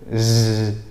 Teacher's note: Lidahnya nggak getar, cuma udaranya saja kayak dipermainkan sehingga bergetar gitu. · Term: zai